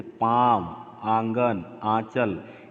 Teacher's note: वे ध्वनियाँ जिनका उच्चारण नाक और मुख दोनों से होता है, जैसे पाँव, आंगन, आंचल, इसको क्या बोलते हैं, अनुनासिक बोलते हैं।